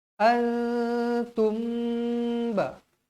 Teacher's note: Bibir kita boleh dirapatkan dengan kadar 2 harakat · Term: ikhfa syafawi